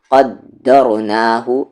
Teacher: یہاں پر دال پر قلقلہ نہیں ہوگا کیونکہ دال حروف قلقلہ تو ہے لیکن یہاں پر جزم نہیں ہے